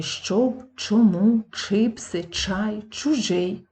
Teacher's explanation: вимовляти звуки буквосполучення нормативно наголошувати слова наприклад в українській мові твердої чітко вимовляється звук ч перед А у е и